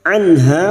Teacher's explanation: nun sukun bertemu ha idhar halki, nun sukun dibaca jelas tanpa mendengung. Anha fathah diikuti alif, 2 harakat mad tabi'i, mu'ridhin. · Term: Idhar halq